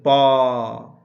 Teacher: जितने भी स जो है उष्म व्यंजन है सबसे ऊष्मा निकलती है बोलते समय ऊष्म व्यंजन कौन है तलव्य से है प का उच्चारण स्थान क्या है प को बोल के देखिए प कहां से बुला रहे देख रहे हैं जब बोल रहे हैं तो दोनों लिप्स सट रहा है ओठ सट रहा है तो प का उच्चारण स्थान ओष्ठ है।